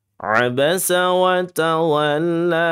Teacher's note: ain sifatnya tawasut ba sifatnya syiddah sin sifatnya rakhawah satu kalimat ini atau satu kata ini ada beberapa sifat adik-adik semuanya nya yang sifatnya memang sangat bertolak belakang.